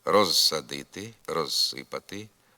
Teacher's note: перед глухим с незалежно від темпу мовлення приголосний з у префіксі роз зберігає дзвінкість